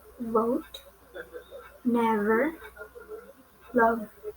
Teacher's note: Next is English consonant V. It belongs to labiodental and fricative.